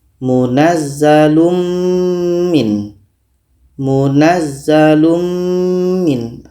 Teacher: mim ini kita dengungkan secara sempurna Kita sudah masukkan tanwin ini kepada mim secara sempurna dan yang